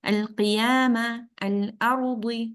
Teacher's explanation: مطلب کیا ہے کہ لام کو کلیئرلی پروناؤنس کریں گے، قمری، بیکاز قمری لیٹرز کے ساتھ آ رہا ہے تو اظہار قمری کہہ دیں گے اسے. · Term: لام القمریہ